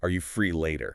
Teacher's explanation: The pitch goes up on later. And it stays up. It's like you're holding out an open hand. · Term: rising pattern